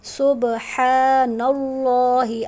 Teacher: اللہ تعالیٰ کے نام سے پہلے زبر ہے تو اللہ تعالیٰ کا ساؤنڈ ہیوی ہو جائے گا